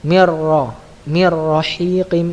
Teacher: Mir rahiqim, ini nunnya tidak dibaca ya